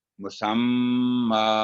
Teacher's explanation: اس کی تنوین ہے فتح اشبائیہ میں بدل جائے گی، تشدید کی وجہ سے غنہ بھی ہوگا. تنوین of فتح will change into vertical فتح، however تشدید will be manifested.